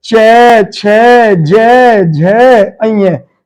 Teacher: जब हम इनका उच्चारण करेंगे तो हमारी जीभ हमारे तालु को स्पर्श करेगी। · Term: तालु वर्ण